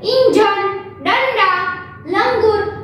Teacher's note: अनुस्वार में न की ध्वनि तीव्र सुनाई देती है